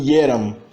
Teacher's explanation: A forma eram, essa forma do imperfeito, também tem um jotinho no começo. Então não é eram, mas sim ieram.